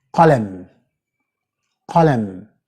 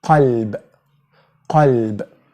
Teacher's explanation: it's a powerful way it comes from the very back end of your throat, okay? And you can find this in the word Qalam. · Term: Qaf